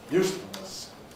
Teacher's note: It's in use, makes it Pre-Fortis clipped. The fullness makes it rhythmic clipped. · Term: double clipping